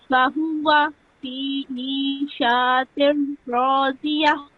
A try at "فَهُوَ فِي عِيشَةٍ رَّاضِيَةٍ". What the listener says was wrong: Make sure that you do not prolong this sound of sheen over here.